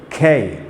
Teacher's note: अगर K के ऊपर सुपरस्क्रिप्ट H है यानी एस्पिरेट हुआ है तो इसको क प्लस ख का साउंड के जैसे पढ़ेंगे और बोलेंगे खे। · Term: एस्पिरेशन